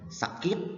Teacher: Maragsa naman, binibigkas sa mabilis na may diin sa huling pantig ng salita